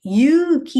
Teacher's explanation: If it is elongated, yuki, u is elongated. So put u. Yuki means courage. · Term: elongation